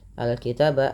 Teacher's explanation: Nah, mad tabi'i fathah bertemu alif. Al-kitaba alif lam qamariyah, dibaca dengan jelas suara lamnya. Al-kitaba taba, ada fathah bertemu alif lagi kecil, mad tabi'i.